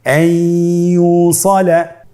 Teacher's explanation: ইয়া হরফটি হলো ইদগামে বাগুন্নার হরফ। তাহলে নুনকে আমরা পরবর্তী হরফ ইয়ার সাথে মিলিয়ে গুন্নার সহিত পড়ব